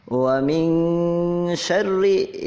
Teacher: Wa min syarri, ini sama ya, dibacanya dengung, nun mati bertemu dengan huruf syin, nun sukun menghadapi huruf syin dibaca dengung.